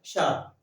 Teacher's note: मूर्धा वाला शा जो ऊपर हमारे मुंह में खुरदरी जमीन होती है, खुरदरी जगह होती है, वहां पर जीभ टच करती है, वहां पर जीभ स्पर्श करती है, तो उसका उच्चारण होता है शा।